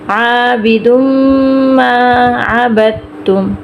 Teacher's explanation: میم پہ غنہ ہوگا، میم پہ شد ہے. عابد ما عبدتم.